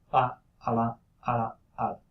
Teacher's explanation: So it sounds something in between an L and a tap. · you have to pronounce it very, very quickly because taps and flaps are ballistic in nature. So you move the tongue toward the target and you release very quickly both movements, right? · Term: lateral flap